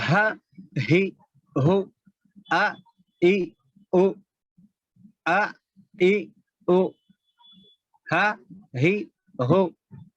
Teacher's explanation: حلق سینے کی طرف والے حصے سے ادا ہوتے ہیں.